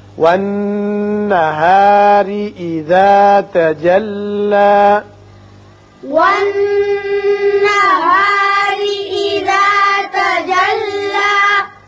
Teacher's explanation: را کے نیچے زیر ہے، اس کو باریک پڑھیں گے